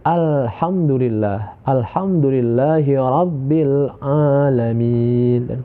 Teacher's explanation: jangan sampai ada pantulan ketika kita membaca alif lam itu